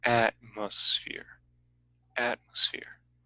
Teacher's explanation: so the peak is at the beginning goes down · It starts at the top and goes down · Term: Stress wave